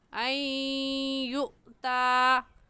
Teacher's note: ان یؤطا کی نون ساکن پر ہم غنہ کریں گے کیونکہ نون ساکن کے بعد حروف یرملون میں سے یا آ گیا ہے